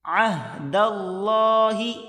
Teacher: عین کو ہا کے ساتھ ملا کر پڑھیں گے